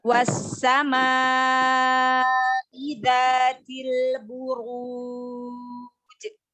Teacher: mat wajib muttasil dibaca panjang 4 sampai 5 harokat · Alif lam syamsiyah, ya. Huruf alif lamnya tidak dibaca tetapi langsung diidghamkan ke huruf syamsiyah yaitu sin